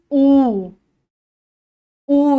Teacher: দেখো জীবটা আস্তে করে নিজেকে গুটিয়ে নিচ্ছে পিছনের দিকে